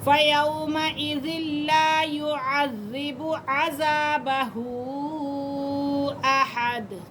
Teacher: زال کو ہم لام کے ساتھ ملا کے پڑھیں گے کیونکہ لام مشدد ہے